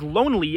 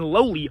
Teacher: vowel still stick around even though I don't pronounce the n i pronounce Lonely with a nasal vowel and lowly without one